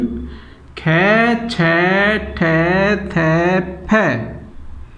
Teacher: फेफड़ों से निकलने वाली हवा बिना घर्षण खाए अधिक मात्रा में मुंह के रास्ते बाहर निकलती है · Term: अघोष महाप्राण व्यंजन